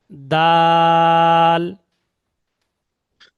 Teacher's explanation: জীবের আগা উপরে দাঁতের গোড়া